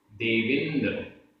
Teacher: देविंद, देव plus इंद, बा में छोटा आ, इंद का ई, आ और ई मिलकर आ का लोप हो गया, ई रह गया